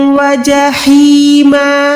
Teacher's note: हा को यहाँ पर हलक के दरमियान से अदा करेंगे